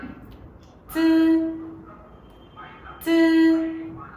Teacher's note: Sau đó thì khi phát âm, đầu lưỡi chúng ta sẽ thụt lại cho luồng hơi từ trong miệng ma sát ra ngoài và dây thanh không rung